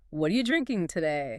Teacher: Quickly becomes, what are you drinking today? Stress on drinking and today.